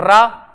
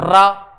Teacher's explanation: रा, आप रा का जैसे ही उच्चारण करोगे तो जीभ यहां पे टच करेगी, रा, लेकिन कैसे करेगी, जीभ लगेगी और छूटेगी, लगेगी छूटेगी